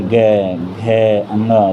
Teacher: मगर ख के बाद से उच्चारित करेंगे ग, घ, अंगा, तो क्या होगा, वर्ड गूंजेंगे हमारे अंदर। तो जो वर्ड गूंजते हैं वो घोष कहलाते हैं।